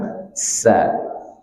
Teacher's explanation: huruf sin ini keluarnya dari ujung lidah bertemu dengan dinding gigi seri bawah